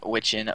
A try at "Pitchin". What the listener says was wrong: Pitchin, mate. You said Witchin.